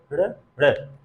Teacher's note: जब जीवा ऊपर जाएगी, झटके से फेंकी जाएगी, वो नीचे आएगी, नीचे आएगी तो धड़ाम से गिरेगी। तो ही जो यहाँ पे पीटना, जैसे जीवा नीचे वाले तालु को, नीचे वाले भाग को पीट रही है, ड़ ड़, तेजी से जा रही है और नीचे तेजी से गिर रही है, ड़ ड़। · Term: ताड़न जात